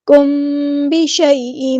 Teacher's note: میم ساکن ہے، اس کے بعد با ہے تو یہاں پہ اخفاء شفوی ہو رہا ہے، الف کے برابر رکیں گے